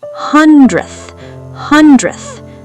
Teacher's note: the d sound literally vanishes. It gets crushed. It's not hundredth.